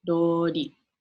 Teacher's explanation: a special thing about the Japanese R, they don't really have an L in Japanese. It's kind of a mix between an R and an L. So like what I like to do is I'll start by saying an R word, but kind of end with like an L sound.